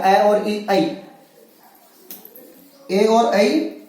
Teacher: कंठ और तालु दोनों जगह से उच्चरित होते हैं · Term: कंठ तालव्य